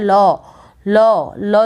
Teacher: इनका जो उच्चारण होता है वो श्वास वायु के जिह्वा के दोनों बगलों से यह निकलती है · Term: पार्श्विक व्यंजन